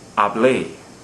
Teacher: stresses the final syllable although it ends in a vowel so it violates rule number one has a written accent okay